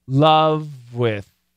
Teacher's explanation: this v actually links into the w so we get love with